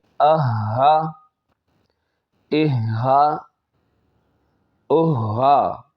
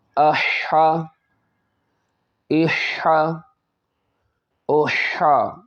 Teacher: ہا یہ سینے سے ادا ہوتا ہے، تھوڑا بھاری کر کے ادا ہوگا، اور یہ حلق کے درمیان والے حصے سے ادا ہوگا، دونوں میں فرق کرنا ہے۔